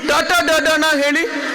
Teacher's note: ಚ ಛ ಜ ಝ ನ್ಯ ಅಂತ ನೀವು ಹೇಳಿದ್ರೆ ನಾಲ್ಗೆ ಹೋಗಿ ಅಂಗಳಕ್ಕೆ ಪ್ಯಾಲೆಟ್ಗೆ ಬಡಿಯುತ್ತೆ, ಅವಾಗ ಮಾತ್ರ ಚ ಛ ಜ ಝ ನ್ಯ ಬರುತ್ತೆ. ನೀವು ಟ ಟ ಡ ಡ ಣ ಹೇಳಿ, ನಾಲ್ಗೆ ಹೊರಳುತ್ತೆ, ಪ್ಯಾಲೆಟ್ಗೆ ಬಡಿಯುತ್ತೆ